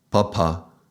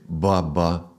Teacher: So ba has a vibration and so this is the voiced sound.